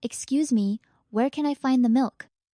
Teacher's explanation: rising intonation at the end of the question shows you're asking, not demanding